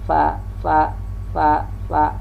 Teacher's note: bibir bawah dengan gigi muka yang di atas